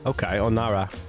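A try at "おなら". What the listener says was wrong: You gotta roll the R a little bit. Just like a single R, like just lick your tongue, like Onara.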